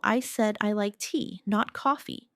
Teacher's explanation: The stress on tea shows the contrast.